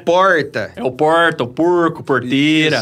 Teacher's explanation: O R retroflexo é indígena.